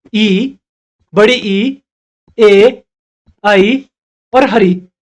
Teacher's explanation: इन स्वरों के उच्चारण में जीभ के अगले भाग का प्रयोग किया जाता है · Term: अग्र स्वर